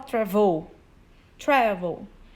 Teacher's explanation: Travel não é a última sílaba que é forte, a gente fala travel.